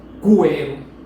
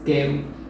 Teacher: Quero, porque este que e este u, essas 2 letras que u, observe que na pronúncia você não diz cuero, você não pronuncia o u, você só diz quero, só tem aqui o K, quero.